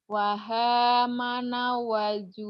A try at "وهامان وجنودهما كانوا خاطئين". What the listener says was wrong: Manya panjang.